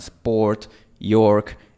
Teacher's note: Esa es la vocal más parecida que existe en inglés a la O española, pero en inglés americano siempre viene con una R después, con un sonido de R